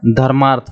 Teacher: अ और अ मिलकर हमारा क्या बनाएंगे? आ बनाएंगे। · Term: दीर्घ संधि